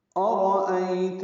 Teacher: حمزہ اقصی حلق سے واضح ادا کریں گے